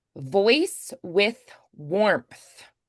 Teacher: with and warmth are both unvoiced th's